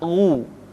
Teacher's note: Ketika dhammah, baru bibir kita dimonyongkan sehingga keluar vokal u dengan sempurna